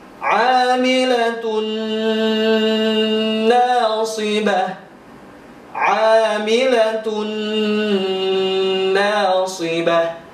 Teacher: Memasukkan atau meleburkan bacaan ke huruf selanjutnya dengan cara didengungkan. Dan harus ditahan selama 2 atau 3 harokat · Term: idgham bi gunnah